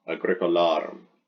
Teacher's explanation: So the accent will go there on a long penult.